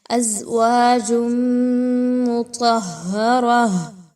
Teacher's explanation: تنوین کی آواز کو میم کی آواز کے اندر مکس کرنا ہے، مرج کرنا ہے غنہ کرتے ہوئے، یعنی آواز کو ناک میں لے کے جانا ہے۔ ازواج مطہرہ، ٹھیک ہے، را اور طا ان دونوں کو پر پڑھا جائے گا اس ورڈ میں۔ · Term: ادغام ود غنہ